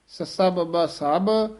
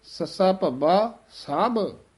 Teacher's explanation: ਬੱਬਾ ਜਿਹੜਾ ਹੈ ਉਹ ਪੋਲਾ ਬੋਲਿਆ ਜਾਂਦਾ ਹੈ, ਭੱਬਾ ਥੋੜਾ ਭਾਰਾ ਬੋਲਿਆ ਜਾਂਦਾ ਹੈ